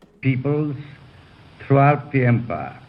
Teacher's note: He does not have the rolled Rs.